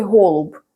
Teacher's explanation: ось це теж о і це О І це о просто Це трошки інша О це щось середнє між о і у